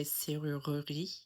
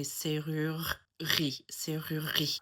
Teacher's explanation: If I did it with a Southern French accent, I could probably do it a lot better because they wouldn't drop that syllable. They would say serrurerie, and that kind of splits up those R's a little bit. · They would say serrurerie, and that kind of splits up those R's a little bit. But in a Parisian accent, they drop that E in the middle there.